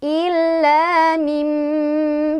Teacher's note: Jangan lupa menahan sampai kena ke hidung.